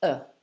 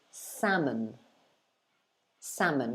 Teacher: the o at the end of the word becomes a schwa